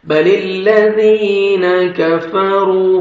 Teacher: زال کو نرمی سے ادا کریں گے، زور سے نہیں زال کو پڑھنا